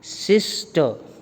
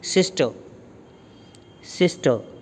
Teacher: ਜਿਹੜਾ ਸਾਡਾ ਪੂਰਾ ਸਟ੍ਰੈਸ ਹੈ ਉਹ ਸਿਸ 'ਤੇ ਹੈ। ਜਿਹੜਾ ਟਰ ਹੈ ਉਹ ਬੜਾ ਲਾਈਟਲੀ ਅਸੀਂ ਬੋਲ ਦਿੰਦੇ ਹਾਂ, ਪਤਾ ਵੀ ਨਹੀਂ ਲੱਗਦਾ।